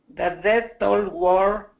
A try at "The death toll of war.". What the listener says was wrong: Of war. Try and keep that V. Of war.